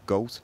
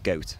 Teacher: the goat vowel has a lot of variation around liverpool so it might be more backed gold or it might start more centrally in the mouth goat